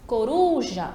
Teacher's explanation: Coruja, a mesma coisa, a tônica vai ser ali a ru. A penúltima sílaba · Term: sílaba tônica